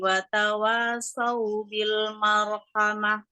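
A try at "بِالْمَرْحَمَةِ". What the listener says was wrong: Maro. Mimnya agak tebal tadi. Kesara sama roknya mau persiapan rok tebal. Bil maro. Ma dulu. Marhamah.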